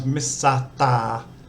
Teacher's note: Like when they say Mr, that ST is not a consonant cluster, so it becomes Misata